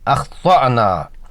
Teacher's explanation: اخطأنا میں طا حرف مستعلیہ ہے، منہ بھر کر ادا کرنا ہے، حمزہ مجزوم جھٹکے سے پڑھنا ہے · طا حرف مستعلیہ ہے، منہ بھر کر ادا کرنا ہے، حمزہ مجزوم جھٹکے سے پڑھنا ہے، اخطأنا۔